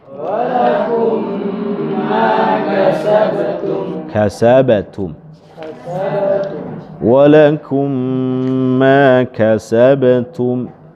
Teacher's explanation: ada gunnahnya, sentuhan di jalur hidung